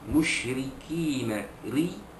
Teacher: ra baris bawah baca lembut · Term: ra tartiq